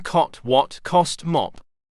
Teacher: spread Hollow right pointing triangle as in cot what cost mop the tongue and jaw are lowered because the back of the tongue is used to articulate this vowel thus it is a back open low vowel the lips are